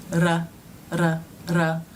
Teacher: common mistakes that I see in my students first is to make a d like sound r r r where the tongue flips